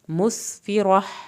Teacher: یہاں پہ بھی ایک الف کے برابر دیر لگانی ہے، مسفرہ، سین کو آپ نے سیٹی کے آواز کے ساتھ پڑھنا ہے